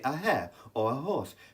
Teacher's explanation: we say a hair or a horse because in these cases the H is pronounced